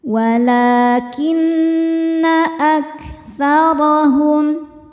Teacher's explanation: Nun hukumnya gunnah musyaddadah karena nun bertasydid. Dibacanya berdengung